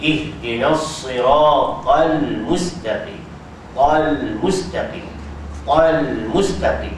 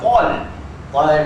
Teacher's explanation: ta tebal lam tu nipis